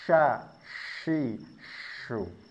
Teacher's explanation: huruf shin ini memiliki sifat hamas. Artinya harus ada nafas yang keluar. Nafasnya atau hamasnya ini lebih banyak daripada huruf hamas yang lain.